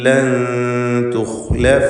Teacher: ഖാഇന് തഫ്ഖീം കൊടുക്കണം. ഇസ്തിഅലാഇൻ്റെ ഹർഫാണ്, തടിപ്പിച്ചുച്ചരിക്കുക. നിസ്ബിയായ തഫ്ഖീം അഥവാ ദമ്മിന് തൊട്ട് താഴെയുള്ള അവസ്ഥയാണ് ഖാഇൻ്റെ തഫ്ഖീമിൻ്റെ മർത്തബകളിൽ ശ്രദ്ധിക്കേണ്ടതായിട്ടുള്ളത്.